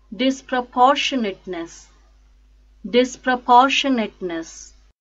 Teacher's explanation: the stresses on third syllable poor